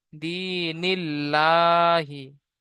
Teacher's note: আল্লাহর শব্দের আগে জের এসেছে তাই আল্লাহর লামকে বারিক করে পড়তে হবে। লামের উপরে তাজদিদ আছে, তাজদিদ ওয়ালা অক্ষরকে দুবার পড়তে হয়, একবার ডান দিকের অক্ষরের সাথে মিলিয়ে একবার নিজে নিজে।